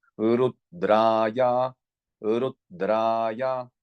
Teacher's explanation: it is the long syllable and, you know, the lower note